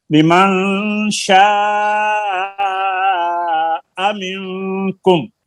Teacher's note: شاہ کے اوپر بڑی مد ہے, مد متصل درمیانی